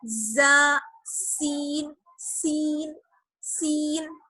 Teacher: زبان کی نوک اور ثنایا سفلا کا کنارہ. زا اور سین یہ دونوں سیٹی والے لیٹرز بھی کہلاتے ہیں. ان کو جب ہم ادا کرتے ہیں تو ہلکی سی سیٹی کی آواز نکلتی ہے, جیسے زا, سین, سین, سین.